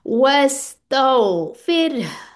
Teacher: यहाँ पे रॉ मुरक्कक पढ़ी जा रही है, रॉब जो है वो भी कंडीशनल लेटर है, उससे पहले रॉ से पहले कसरा आ रही है, तो हम इसको बारीक पढ़ेंगे।